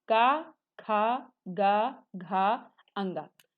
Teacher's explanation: का वर्ग जो है वो आपका है किससे, इसका उच्चारण स्थान क्या है, कंठ से।